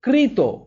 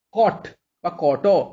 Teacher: যে রি র স এর পরবর্তী যে দন্তধ্বনি, সেগুলো মূর্ধন্য ধ্বনিতে পরিণত হচ্ছে